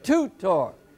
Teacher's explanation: in the word tutor, we pronounce it tutor, the accent on the first syllable. So this becomes the heavy accent, a toot, and then a light accent, a heavy one, and then a light.